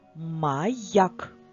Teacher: після голосної букву я читаємо як два звуки й а